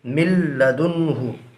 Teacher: یہاں پر نون ساکن کے بعد حروف یرملونہ میں سے لام آ رہا ہے، لہٰذا یہاں پر بھی ادغام بلا غنہ ہوگا۔ اس کو ادغام تام بھی کہا جاتا ہے، یعنی میم کو لام سے ملا کر پڑھیں گے۔